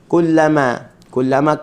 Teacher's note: kaf bagi depan, pangkal lidah juga tapi di depan sedikit.